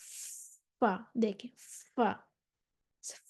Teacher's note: Inner lower lip with the edges of the upper incisors and is the exit point for the letter fa.